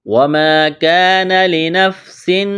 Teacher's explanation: وَمَا الف مدہ ہے، ایک الف کے برابر کھینچنا ہے